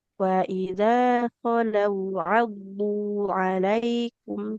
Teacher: Huruf dotnya penekanannya di sisi lidah menempel ke gigi geraham.